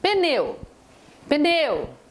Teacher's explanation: o e é forte o u é átona o u não tem direito de ser vogal aqui então eu tenho uma vogal mais uma semivogal saio da forte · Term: ditongo